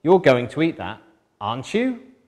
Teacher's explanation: Rising intonation, I don't know if you're going to eat it, tell me if you are or not.